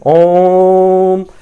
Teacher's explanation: जब ओम आप कहेंगे तो ओम शब्द को बोलने में आ की तुलना में 3 गुना ज्यादा समय लग रहा है, इसी वजह से इसे प्लुत स्वर कहते हैं।